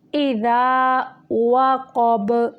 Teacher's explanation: इज़ा, ई हमज़ा को झटके से, दाल को नरम तरीके से। इज़ा वक़ब, वाव की अदायगी के वक़्त होंठों को गोल करेंगे, कॉफ मोटा पढ़ेंगे और बा को साकिन करते हुए कलकला करेंगे। अगर यहाँ पे रुकना नहीं है तो फिर हम बा को उसकी हरकत के एतबार से उठाएंगे।